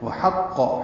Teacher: حا وسط حلق سے ادا کریں گے